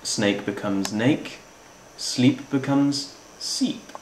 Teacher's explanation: Consonant clusters are reduced as well. Snake becomes nake, sleep becomes seep.